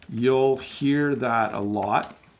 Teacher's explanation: we do hit that L fairly hard when we say you'll